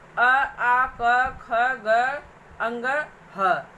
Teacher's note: इनको आप बोलेंगे तो आपकी वायु जो है कंठ से निकलती है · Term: कंठ वर्ण